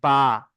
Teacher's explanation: ঠোঁটের ভিজে অংশে মানে ভিতরের অংশটা। দুই ঠোঁটের ভিজে অংশ থেকে উচ্চারিত হয় বা।